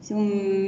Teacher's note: نأتي بغنة الميم المشددة بمقدار حركتان